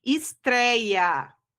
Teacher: Paroxítona porque é a penúltima sílaba mais forte, e essa penúltima sílaba apresenta o ditongo aberto, ei.